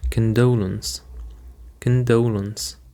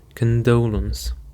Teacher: the stress actually is on the second syllable.